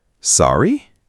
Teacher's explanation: Instead of what, use sorry with a rising tone.